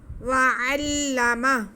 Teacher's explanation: صرف یہاں پہ ہم نے کیا کرنا ہے کہ عین کو لام کے ساتھ ملا کے پڑھنا ہے، تھوڑا سختی سے، تاکہ شد ادا ہو سکے۔ باقی کسی لفظ کو کھینچنا نہیں ہے۔